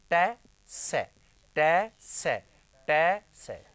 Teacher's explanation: ये मूर्धन्य से, समझ में आ गए? और मूर्धन्य से जहां से ट बोलेंगे वहीं से स बोलेंगे हम लोग।